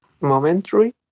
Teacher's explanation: So combining the last 2 syllables and making it into 1.